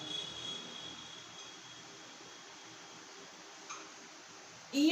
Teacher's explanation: इया वर्ण तालु प्लस नासिका, तालु और नाक दोनों की सहायता से इस वर्ण का उच्चारण किया जाता है। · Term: तालु नासिका वर्ण